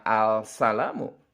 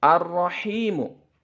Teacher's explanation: alif lam nya tidak terbaca tidak terlihat tidak terdengar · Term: Idgham Syamsiah